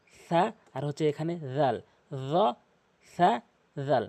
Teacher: এই তিনটি হরফ জিহ্বার আগা দাঁতের আগার সঙ্গে উচ্চারণ হয়